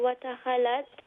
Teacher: Watakhalat is full mouth because it has a quality of isti'la. Yeah. And then the lam has a tashdid, so it's also double letter, double sound.